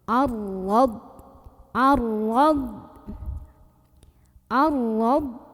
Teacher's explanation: Dengan cara mengangkat pangkal lidah kita tanpa mengubah posisi makhraj dari huruf ro. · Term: tafkhim